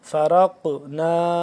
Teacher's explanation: را کو بھی موٹا پڑھیں گے قاف کو بھی موٹا پلس قاف کو قلقلہ کریں گے